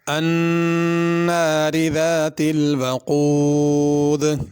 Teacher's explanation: الناری نون پہ غنہ ہے اور ناری کی را باریک ہوگی